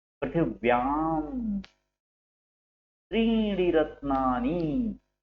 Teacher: पृथिव्याम, यहाँ पर देखेंगे पृथ्वी में था पूरा है तो पृथ्वी पूरा बोलना है, फिर व्याम, और व्या के ऊपर या के ऊपर बिंदी है तो उसको हमें आधा मा की तरह उच्चारण करना है